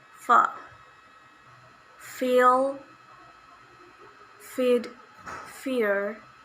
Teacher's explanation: voiceless labiodental fricative sound